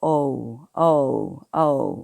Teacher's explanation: 이번에는 오의 장모음을 해볼게요. 오는 오가 아니라 오우를 부드럽게 읽는다고 생각을 하시고 발음을 하셔야 돼요